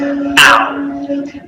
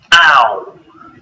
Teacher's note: This is a combination of a and or oo. Now our mouth is closing and the shape of the lips is changing at the same time, rounding a little as we say the sound. Ow. Starting on the a and finishing on the or oo.